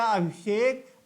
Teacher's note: जब संधि हुई इसकी और ये हो गया अभिषेक, अब यहां जो सा है ये है मूर्धन्य सा